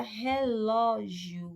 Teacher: a sílaba tônica é a segunda sílaba de trás para frente